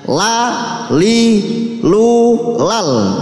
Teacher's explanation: Sisi lidah bagian depan mengenai gusi gigi depan atas, ini gambil nih, menjadi makhrajnya la, li, lu, lal.